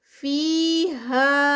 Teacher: فیہا فی پہ یا مدہ 2 کاؤنٹس, ہا پہ 4 کاؤنٹس کیونکہ یہ مد منفصل ہے